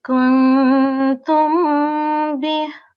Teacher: So we can see with our example here, the Mim Sakin is followed by Ba. So we would be prolonging this Mim Sakin for around 2 seconds with slight nasal sound. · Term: Ikhfa Shafawi